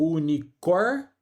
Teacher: o i é uma semivogal e o o aqui, ó, é uma vogal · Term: Ditongo crescente